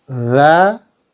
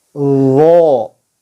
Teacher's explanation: Ujung lidah menyentuh gigi depan bagian atas . Jika dza, lidah diturunkan. Jika dzo, pangkal lidah terangkat.